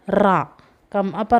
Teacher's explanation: റ നമ്മൾ ഉച്ചരിക്കുമ്പോൾ തന്നെ കമ്പിതമാകുന്നുണ്ട്